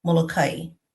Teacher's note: some of the locals actually pronounce their island Molokai. And so that's how I'm saying it without the glottal stop